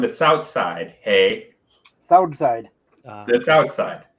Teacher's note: white milwaukeeans we pronounce our th's like D's